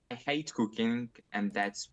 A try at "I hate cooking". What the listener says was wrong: I hate cooking. A little bit of intonation there too. I hate cooking. Maybe I hate cooking. I'd like to see maybe more stress on hate than cooking. I hate cooking. I hate cooking.